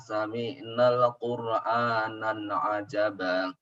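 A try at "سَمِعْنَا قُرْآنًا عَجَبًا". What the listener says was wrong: Nah, di situ tidak ada alif lam. Sami'na Qur'anan ajaba. Qur'anan ajaba.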